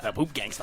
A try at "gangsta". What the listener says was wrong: It's not gangster, it's gangsta.